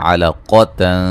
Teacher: قاف کو موٹا ادا کریں گے